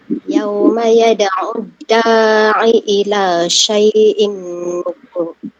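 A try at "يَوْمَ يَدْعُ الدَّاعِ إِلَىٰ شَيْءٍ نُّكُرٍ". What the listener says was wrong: Kenapa dadu panjang sikit? Terpanjang ke? Terlajak lah tu. Terlajak tu lah. Da'i ila. Da'i. Dua tu.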